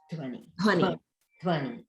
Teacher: notice the dha, dha plus va in dhvani. So that's a mahaprana, the dha.